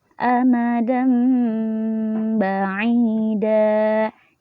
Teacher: cara membaca iqlab adalah dengan cara merubah apa yang dirubah yaitu nun mati atau tanwin nya disuruh merubah atau berubah menjadi huruf mim